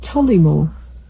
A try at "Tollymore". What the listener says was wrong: Tolly. It's Tolly. I think I'd say it's more Tolly than Tully. Tollymore. No, T-O. Yeah, T-O-L-L. Not T-U. It's Tollymore.